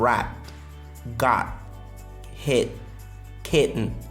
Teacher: Mais je parle aussi du T qui peut être comme le glottal stop